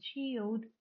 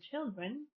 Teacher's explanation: The first element or the first word shows the lengthened vowel, whereas the second one doesn't, because in children you have three consonants following the vowel, that is l, d, and r, right?